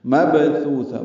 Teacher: با کو یا سے ملانا ہے، جلدی پڑھنا ہے. مبثوثہ، با ساکن پہ قلقلہ ہے، تا نرمی سے پڑھیں گے اور لمبا کریں گے. مبثوثہ، تا کو تائے مربوطہ سے ملانا ہے وقفاً، یہ ہاں میں تبدیل ہو جائے گی اور اس پہ حمز ہوگا.